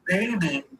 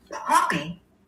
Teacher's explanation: So it's still a stop. It's a bilabial stop.